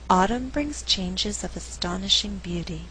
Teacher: The verb brings is not stressed because I want to create a good rhythm in the sentence. I alternate the stress, and what results is a rhythm like this: dun da dun, dun da dun, 1 and 2 and 3 and 4.